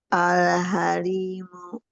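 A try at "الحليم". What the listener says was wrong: Pakai ha tenggorokan tengah, lembutkan. Al-halimu. Ha, ha, ha. Al-halimu. Jangan mu.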